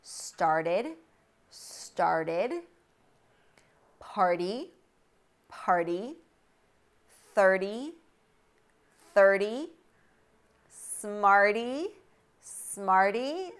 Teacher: t is a flap t after an r sound but before a vowel or a diphthong